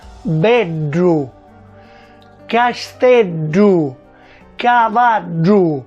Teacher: Per prima cosa parliamo della pronuncia cacuminale, che riguarda alcuni nessi del siciliano, ossia la D cacuminale, che è una lettera dell'alfabeto siculo, che si pronuncia retroflettendo la lingua sul palato